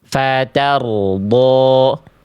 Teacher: getarannya sedikit saja huruf ro ini, nggak perlu berlebihan. Ya, tapi nggak perlu hilang juga, jangan sampai hilang.